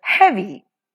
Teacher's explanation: in the word heavy, the first syllable he is stressed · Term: trochaic foot